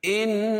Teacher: ان نون مشدد ہے اس میں غنہ ہوگا، ایک الف کے برابر غنہ کریں گے